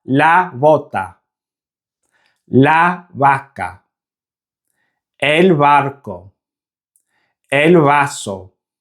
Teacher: To make the B and V sound, you have to imagine that you're going to make the English B sound, but don't fully close your lips.